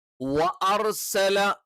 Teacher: ഒരു രീതിയുണ്ട് അതല്ല നമ്മൾ ഇവിടെ ശരിക്കും ഉച്ചരിക്കുന്നത് വ്വ എന്ന് എന്ന് പറയുന്ന ചുണ്ടിന്റെ ഫ്രണ്ട് ഭാഗം ഒരു ഏകദേശം ഒരു വൃത്താകൃതിയിൽ വരുന്ന രീതിയിൽ ആയിരിക്കും